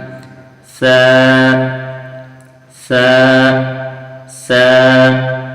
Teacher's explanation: زبان کی نوک اور ثنایا علیہ کا کنارہ، یعنی سامنے کے دونوں دانتوں کا کنارہ۔